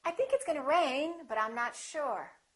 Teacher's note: If I say it the second way, with my intonation going up, with the pitch going up, it sounds like something else is coming, like I'm not finished speaking.